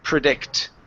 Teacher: the stress is on the end of the word predict